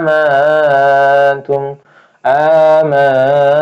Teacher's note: nun sukun ketemu huruf ta ikhfa hakiki samar